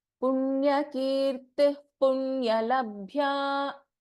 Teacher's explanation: So whenever there is a Visarga and then we have Pa, we do not pronounce the Visarga here.